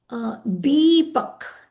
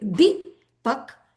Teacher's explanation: So if I say Deepak, D, it's long. I didn't say Dipak. If I say Dipak, it'll be short.